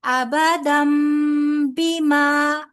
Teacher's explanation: تنوین کے بعد آگے با آ رہا ہے، لہذا یہاں پر اقلاب کا قاعدہ ہوگا، نون کی آواز کو میم کے ساتھ بدل کر پڑھیں گے